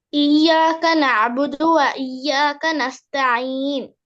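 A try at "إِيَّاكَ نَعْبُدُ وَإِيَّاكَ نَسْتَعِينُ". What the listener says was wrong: பிள்ளையே நஸ்தஈன் 2 செகண்ட் நீங்களா? Minimum level 2 second. இப்ப நான் கேட்கிறேன் நஸ்தஈன், அது 2 செகண்ட்.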